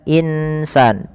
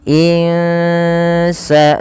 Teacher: Kemudian pada lafal al insanu insanu ada bacaan yang kita kenal dengan bacaan ikhfa. Cara membaca ikhfa yaitu menyamarkan suara nun kepada huruf sin. Jadi tidak lagi suara nunnya dibaca dengan jelas suara n-nya yang di mana tidak lagi dibaca insan, tapi dia menyamarkan kepada huruf sin.